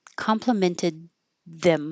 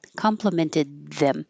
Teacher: My tongue's further forward for the D. It can even be between the teeth because I'm just stopping the airflow and then releasing it